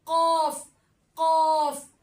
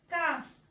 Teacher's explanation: तालू के नरम हिस्से पे जोर आएगा और जबान की जड़ होगी जो तालू के नरम हिस्से पे जोर आके कौफ अदा होगा कौफ कौफ लहातिया दो है एक तो मैंने आपको करवा दिया कौफ अब है काफ जो कौफ है वो तालू के नरम हिस्से से अदा होता था और ये काफ है ये तालू के सख्त हिस्से से अदा होता है